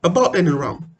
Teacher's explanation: the schwa the short vowel at the start of the word like about and around in unstressed ssb syllables short vowels are often pronounced as schwa